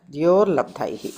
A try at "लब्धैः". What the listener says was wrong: Labdaih, not Labdaihi, it becomes a ih sound instead of, you can put the joining sound to join it instead of the Visarga, yeah.